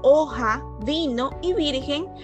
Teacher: estas solamente llevan la mayor fuerza de voz en la penúltima sílaba